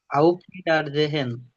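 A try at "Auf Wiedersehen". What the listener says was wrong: যে হেন না, হেন না। এটা এন হবে। জে এন। জে এন। হ্যাঁ, এই এই হাটা উচ্চ থাকবে। এই হায়ের উচ্চারণ কোনো হবে না। জে এন এরকম হবে। জে এন।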